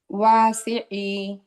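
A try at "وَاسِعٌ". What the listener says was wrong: ওয়াতে একটা হালকা টান হবে। ওয়াসিই, ট্রাই করেন এভাবে। ওয়াসিই, একই দমের মধ্যে রাখেন।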